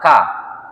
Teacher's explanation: Dari kerongkongan bagian atas k Jadi bagaimana misalkan angka itu kan angka ya ketika dia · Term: huruf k